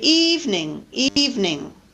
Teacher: We can also delete vowels so in a process called syncope which is a medial vowel disappearing